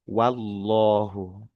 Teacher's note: Huruf wau w fathah itu tipis. Loh itu lafaz jalalah itu tebal. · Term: tipis dan tebal